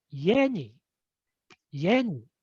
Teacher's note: Okay, the third pattern is called tail high. That means the pitch rises from a low starting point and to a high pitch on the last syllable, and then drops immediately on the following particle